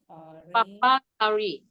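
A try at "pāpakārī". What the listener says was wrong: It's not Papa. Papakari. Papakari, yes. P long A.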